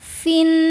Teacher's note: Suket sukun tidak bisa dibaca sehingga sukun pertama kita lepaskan maka fi jadi pendek jika wasal fin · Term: takhallus bil hadfi